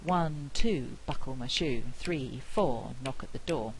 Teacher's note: at the door these things are quite stress timed and with we're squashing syllables in knock at the door to fit with the rhythm